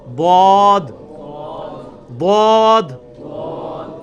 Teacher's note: ضاد یعنی لیفٹ زبان کا کنارہ اوپر کے دانتوں کی جڑ میں لگانا ہے, یا دونوں کو پیرلل میں دونوں کو بھی لگا سکتے ہیں.